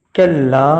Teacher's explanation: کاف کو لام سے ملایا اور لام کو کھینچا گیا ہے دو الف کے برابر